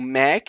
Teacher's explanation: a gente não tem esse Mc é uma coisa meio mais fechada não seria tão aberto a gente tem que fazer o quê um Mac uma coisa aberta com uma vogal né então seria Mac Donald's né então por isso que o